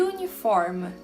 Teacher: Diferentemente de uniform, porque em uniform, foneticamente, o som que está ali não é da letra U de vogal, e sim da letra Y, portanto consoante